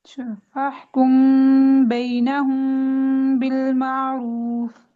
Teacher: मीम की आवाज़ को नाक में छुपाकर इजहार वो इदगाम की दरमियानी कैफियत के साथ अदा करना। यानी इख्फा ना पूरा इजहार होता है ना पूरा जी, इदगाम होता है। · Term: इख्फा शफवी